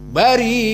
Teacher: mad jaiz munfasil dan mad wajib muttasil bagi qiraah Warsh an-Nafi' dibaca al-isba', dibaca sita harokat. Maka contohnya mad wajib muttasil bari'un, maka di sini 6.